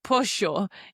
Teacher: In some areas of Argentina, they pronounce it like a sho sound instead of jo. It becomes this like S sound.